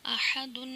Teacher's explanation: غنہ لازمی کرنا ہے کیونکہ تنوین ہے